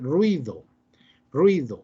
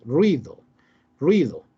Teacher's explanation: ninguna de las dos vocales tiene fuerza, ni la U ni la I, ¿verdad? Las dos son suaves, ruido, ruido. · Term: diptongo